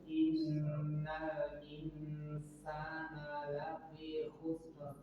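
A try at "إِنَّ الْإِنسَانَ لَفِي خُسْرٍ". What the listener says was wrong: Nah, masih khusr. Berarti dia tapi khusr seperti kita menggunakan ra, khusr, ra. Kembalikan ke ra. Khusr, ra. Tebal.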